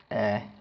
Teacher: el caso de la a yo normalmente lo explico como que es una a que se mezcla con una e Sí y suena más o menos como cuando vamos al doctor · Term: a con diéresis